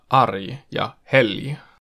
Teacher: <g> äännetään myös j:nä, r:n ja l:n jälkeen kuten sanoissa 'arg' ja 'helg'.